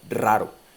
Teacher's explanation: la vibrante múltiple sí que puede aparecer al principio de una palabra, como en el caso de raro, eso sí que aparece al principio de palabra.